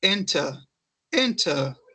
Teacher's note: Em inglês britânico, o R final tem som de schwa, que fica assim, ó, enter, enter, esse final, enter, tá?